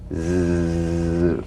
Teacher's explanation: Ridge Z the tip in gentle contact with the hard pallet the Z vibrates in that very small open space between the tongue and the upper teeth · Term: voiced s sound